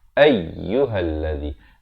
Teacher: Lam juga bersabdu, tekankan zi di hujung lidah 2 harakat.